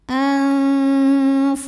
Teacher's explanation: nun sukunnya dibunyikan samar-samar, siap-siap menuju huruf fa disertai dengung. Nah ini dengung dan samarnya sama ya, jadi suara yang masuk hidung sama aliran suara dari mulut seimbang karena fa makhrajnya tidak terlalu dekat, tidak terlalu jauh dari nun.